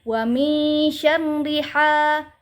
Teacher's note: apabila ada harokat fathah bertemu dengan alif saksi, maka dibaca panjang 2 harokat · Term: mad tabi'i